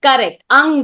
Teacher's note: it comes from the nasal plus the throat sound that is there